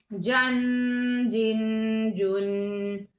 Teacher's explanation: آگے جیم، جیم نہیں کہیں گے، ناک میں آواز نہیں لے کے جائیں گے، واضح کر کے پڑھیں گے